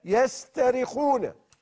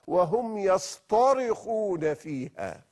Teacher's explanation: فحول التاء المرققة إلى الطاء المفخمة حتى تدل على أعلى درجات المعنى في الصراخ، فقال سبحانه: وهم يصطرخون فيها.